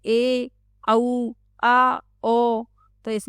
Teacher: मुख तो खुलता है लेकिन विवृत स्वर से कम खुलता है। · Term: अर्ध विवृत स्वर